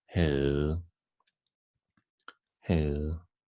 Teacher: The last one is really different from its writing. We can see we don't pronounce the V and we don't pronounce the D, and we make it a long sound, as in havde.